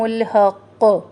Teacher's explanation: تشدید بھی ہے اور یہاں پہ ہم رک بھی رہے ہیں تو ہم نے 2 دفعہ قلقلہ کرنا ہے، حق سختی سے.